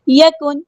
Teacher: یکن اظہار ہو رہا ہے، نون ساکن کی آواز کو ہم یہاں پہ ظاہر کریں گے